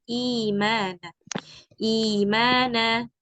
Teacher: di sini harakat Hamzah yang pertamanya kasrah makaad eh apa namanya Hamzah yang keduanya itu diganti dengan Ya Sukun sehingga dibacanya jadi imana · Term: mad badal